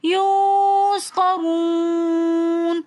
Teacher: واو ساکن اور اس سے پہلے پیش ہونے کی وجہ سے واو مدہ بن جائے گا تو اس لیے اس واو کو ہم ایک الف کی مقدار کھینچ کر پڑھیں گے یسقرون.